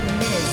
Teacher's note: that is pronounced mis so that has a z sound